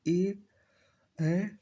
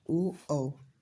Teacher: ए ऐ का उच्चारण स्थान कंठ तालुप्य होता है और ओ और औ का उच्चारण स्थान कंठोष्ठी होता है